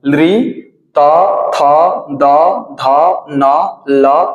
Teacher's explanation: दंत होगा। इन सभी का उच्चारण स्थान दंत अर्थात इनका उच्चारण करते टाइम हमें दंत का इस्तेमाल करना पड़ता है।